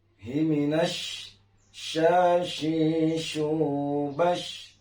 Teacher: Banyak sekali kita mendengar sebagian orang membacakan daripada ta'awuz ketika melafalkan atau mengucapkan makhraj shin besar, ini masih sama dengan sin kecil. Jadi makharijul huruf shin besar itu adalah harus keluar daripada angin yang menyeluruh dari sudut kiri bibir kita dan sampai sudut kanan bibir kita